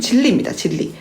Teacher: 이게 유음화인데, 자, 우리가 발음을 진리라고 합니다. 왜냐면 뒤에 나오는 리을 때문에 앞에 나오는 니은이 리을로 바뀐 겁니다